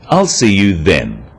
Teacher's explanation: This is now a definite commitment and an end to the arrangement. Notice how the stress is on the word then to confirm that the time is definite.